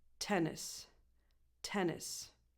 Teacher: So it's a softer N sound as if it was one. And the last vowel is a lax E, like in the word it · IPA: [ɪ]